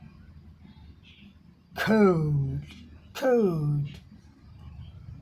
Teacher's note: Stop the air with back of your tongue against the top of your mouth. अपने जीभ का पिछले भाग से हम जाकर ऊपर सटा देते हैं और उसके बाद हवा रुक जाती है।